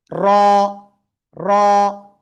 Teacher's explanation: জিহ্বার আগার পিঠ তার বরাবর উপরে তালুর সাথে লাগাবো, লাগিয়ে মোটা আওয়াজে এক আলিফটা নিয়ে উচ্চারণ করব।